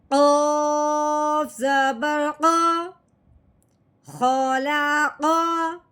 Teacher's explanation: قوف کو حلق کی گہرائی سے نکالتے ہیں اور جھٹکے لگا کے ادا کرتے ہیں، اس کے اوپر بھی زبر لگی ہوئی ہے۔